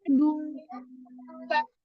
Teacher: pada kata adun, du, monyong dulu baru ikhfa